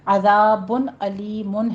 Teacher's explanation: ذا کو نرمی سے پڑھیں گے، سیٹی کی آواز نہیں آنی چاہیے. بن علیم میں تنوین کا قاعدہ ہے اظہار ہلکی کریں گے، اور آگے عذاب علیم نہیں کہنا، عین نہیں ہے، آگے حمزہ ہے عذاب، اور پھر آگے علیم، علیم الف کے ساتھ ہے.